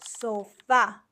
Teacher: the stress is on the last syllable and it has an accent because it ends in a vowel